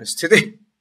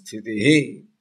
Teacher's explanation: In North India they chant that Sthiti. But the South Indians chant, and the proper way of chanting is Sthitihi. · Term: Visarga